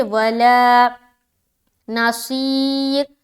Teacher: یہاں پر جب اسٹاپ کریں گے تو را ساکین بن جائے گا اور اس سے پہلے یا ساکین ہے، لہٰذا را ہر حال میں باریک رہے گی